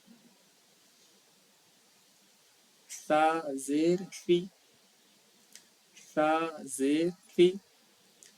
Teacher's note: بالکل سا کو ایک دم باریک پڑھنا ہے. جو زبان کی نوک ہے اس کو لگائیں، جو دونوں سامنے کا جو دونوں دانت ہے اس کے بالکل اینڈنگ پوائنٹ پہ جہاں پہ وہ ختم ہو رہا ہے